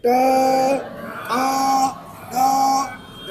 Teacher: जो शब्द बोलने से आपकी जीवा मस्तक को टच करती है, उसे कहा जाता है मूर्धन्य